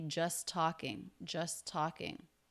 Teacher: to connect those with a single T just talking just talking you do not need to try to make the T twice we're going to use that to link the words